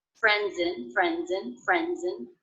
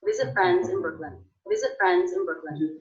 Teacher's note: visit friends visit friends visit friends visit friends in Brooklyn also the ending Z sound of friends linked in to the beginning vowel of the next word